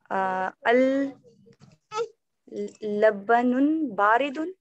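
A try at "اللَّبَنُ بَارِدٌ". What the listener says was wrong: Al labanun. Alif lam aa gaya to hum padhenge al labanu baridun. Al labanu. Al labanu.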